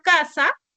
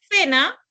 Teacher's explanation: en la palabra casa representa la oclusiva velar sorda y en cena representa la fricativa interdental